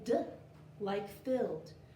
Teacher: D is a voiced sound, and you'll feel your fingers vibrate for d.